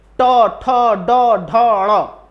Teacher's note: इन पांचों को आपको बोलने के लिए जीभ को थोड़ा सा टेढ़ा करना पड़ रहा है। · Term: मूर्धन्य